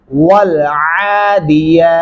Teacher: अगर आप वल आदियाती पढ़ते हैं तो फिर आप अलिफ की आवाज ऐड कर रहे हैं, दाल नहीं डालना आपने। यहाँ पे बारीक हा पढ़ेंगे वक्फ करते हुए